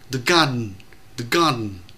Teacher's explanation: chữ đơn nó đọc rất nhanh và chữ ơ gần như là mất, ta đọc là the garden chứ không phải là the garden.